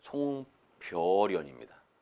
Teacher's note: 니은 소리를 첨가해서 발음하지를 않는다고요.